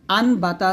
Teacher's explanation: এই যে মিনি একটা মিম, ছোট্ট একটা মিম, এই মিমটা দ্বারা এটাকে পরিবর্তন করতে হয়। এখানে আসে নুন সাকিন, তবে এখানে নুন সাকিন উচ্চারণ না করে মিম সাকিনের মতো পড়তে হবে। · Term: ইকলাব